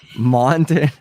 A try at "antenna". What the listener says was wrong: It's just the end of it. If you miss the start, like no, it's definitely antenna.